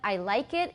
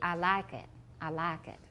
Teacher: 它是从双母音变单母音，它就是把后面去掉